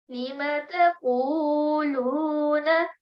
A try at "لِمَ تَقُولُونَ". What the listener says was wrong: And over here, you did not read a kasra, you read a fatha. Remember that this has kasra below.